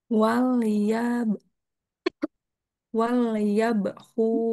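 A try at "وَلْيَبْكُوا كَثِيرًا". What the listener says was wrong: Ya nggak kedengeran mantul bawahnya.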